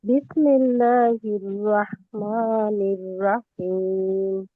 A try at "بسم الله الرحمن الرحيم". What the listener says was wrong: রোয়া হয়ে যায় আপু, হ্যাঁ রোয়া হয়ে যায় রোয়া হবে না র হবে র বিসমিল্লাহির রহমানির রহিম